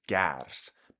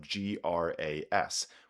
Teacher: The word for grass in Old English was gars, but by the 12th century, we start seeing spellings of GRAS, which show that metathesis had taken place. The A and the R sound had switched places.